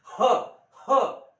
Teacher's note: महा म्हणजे मोठा आणि प्राण म्हणजे काय सांगितलं मी श्वास म्हणजे प्राणही वायू जो आहे तो फुफ्फुसातून जोराने बाहेर फेकावा लागतो हा वर्ण उच्चारण्यासाठी म्हणून याला महाप्राण असं म्हणतात मराठीमध्ये महाप्राणयुक्त व्यंजन जी आहेत ती